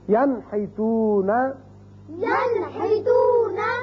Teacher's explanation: نون ساکن کے بعد ہا آ گیا تو اس کو ہم ظاہر کر کے پڑھیں گے نون کے مخرج کو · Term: اظہار